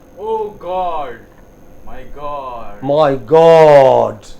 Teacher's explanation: stress on god not on my